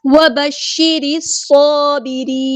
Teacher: شین کو ہم نے واضح کرنا ہے کیونکہ تشدید والا حرف ہے